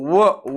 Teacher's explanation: या वर्णाच उच्चार स्थान कोणतं तर लक्षात ठेवा दंतष्ट व दात दाताला जिभेच टोक लागते आणि ओठाची हालचाल होते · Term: दंतष्ट वर्ण